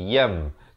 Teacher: Asalnya yan tanwin dua di sebenarnya sahabat-sahabat ya, tapi di dalam Al-Quran Asal Musmani pada hukum iqlab diberikan satu baris tapi ditemani dengan mim kecil. Bacanya daripada yan tukarkan kepada bunyi mim, daripada nun kepada mim, yan jadi yam, tetapi dibacakan dengan dua harakat.